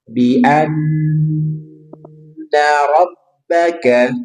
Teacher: Ingat nun bertasdid tahan tiga harakat.